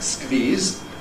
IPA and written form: skviːz (squeeze)